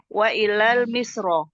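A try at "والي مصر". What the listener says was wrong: Panjang wawunya.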